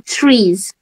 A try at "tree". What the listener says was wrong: And there is no s at the end of tree. There is no s.